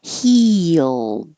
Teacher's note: All of these may sound like two parts because you're going very high for the E and then sliding down and making an L